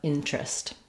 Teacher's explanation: when we have an ER in the middle that's unstressed, sometimes that syllable just drops, and instead of terest, we just get trist, changes to an R blend.